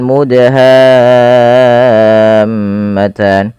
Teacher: Perhatikan di sini teman-teman, pada lafal mudha, di sini ada huruf dal yang berharakat sukun dan di sini diwarnai dengan warna biru yang artinya huruf dal ini wajib kita baca dengan bacaan qalqalah. Yaitu huruf dalnya harus memantul ya, harus kita pantulkan. Kesalahan yang terjadi dalam membaca qalqalah tidak mantul.